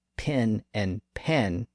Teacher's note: process is the source of the so-called pin pen merger where certain word pairs like that are pronounced exactly the same this pronunciation is common in the American South